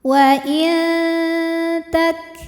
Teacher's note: yang menghadapi huruf ta huruf ta makhrajnya dekat dengan Nun sehingga nun sukun dibunyikan samar-samar menuju makhraj huruf ta disertai dengung dengungnya sedikit jadi suara yang masuk hidung masih sedikit aliran suara dari murut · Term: ikhfa Hakiki